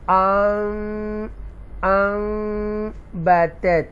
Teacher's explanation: तो मीम की जो आवाज़ है वो मर्ज हो जाएगी नून साकिना के अंदर ही। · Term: इकलाब